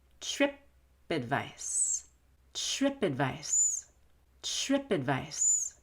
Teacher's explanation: i take ad and i reduce it to ed